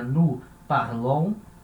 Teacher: a sílaba é forte no final, então fica nous parlons